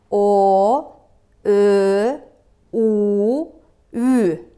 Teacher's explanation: Мына эриндүү үндүлөрдү айтканыбызда, биздин эриндерибиз өрдөктүн тумшугуна окшошуп айтылат экен.